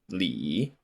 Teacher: this is the third tone which goes down then up